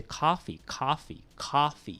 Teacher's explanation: it's almost like an ah but not an ah all right it's between the o and the ah